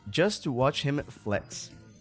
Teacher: the H in him gets dropped · the T from just morphs into the T sound from to, and to is reduced to a simple t